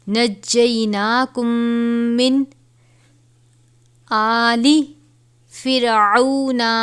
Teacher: میم ساکن ہے، اس کے بعد یہ دوسری میم ہے، تو ہم اس پہ غنہ کریں گے